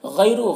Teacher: یہاں پر یا ساکن سے پہلے غین میں زبر ہے تو یا لین ہوگا، اسے نرم آواز کے ساتھ جلد پڑھیں گے. را میں پیش ہے تو را کو پر پڑھیں گے.